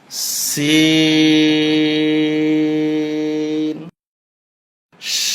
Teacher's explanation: লিক পানসারের আওয়াজ হবে, জিহ্বার আগা নিচের দাঁতের আগায় লাগবে